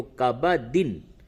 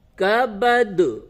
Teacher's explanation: اگر آگے ملا کر کے پڑھیں گے تو کبدن، وقف کریں گے تو پھر یہاں پہ قلقلہ ہوگا